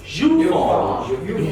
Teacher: More stress on phone.